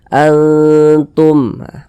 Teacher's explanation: didengungkan jadi suaranya itu kita tahan kita panjangkan sejenak sepanjang dua harakat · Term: ikhfa Hakiki aqrob